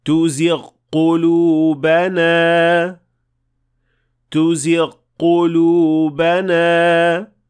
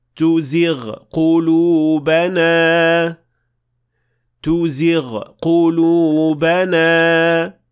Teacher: it should sound like two separate letters, since these two sounds cannot and should not be assimilated